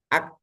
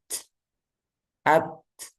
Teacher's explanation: yang pertama sidahnya dulu suaranya dulu dia tertahan Ak baru dilepas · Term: syidah